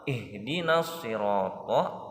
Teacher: hukum idgham samsiyah karena ada lam ta'rif diikuti shad. Cara membacanya dimasukkan ke dalam huruf shad.